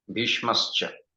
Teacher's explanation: So this Sa, Dantya Sa, dental Sa got converted into palatal Sha